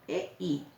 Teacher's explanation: E es abierta, la I cerrada. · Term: diptongo